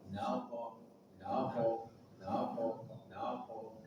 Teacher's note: Ada nun sudah kita bahas, qaf pangkal lidah. Dan dalam ayat ini qafnya sukun, maka dia menjadi sifat qalqalah.